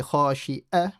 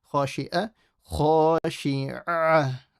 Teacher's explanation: make sure this ayn is from the middle of the throat. So don't say خاشعة with a hamza.